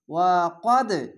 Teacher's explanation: দালের উপরে সাকিন, এখানে দেখেন দালের উপরে সাকিন, তার জন্য কলকলা আছে, ধাক্কা মেরে নিচে সাউন্ড আসে। ওয়া যাবার ওয়া, কদ দাল যাবার কদ, ওয়া কদ, এভাবে ধাক্কা মেরে পড়তে হবে।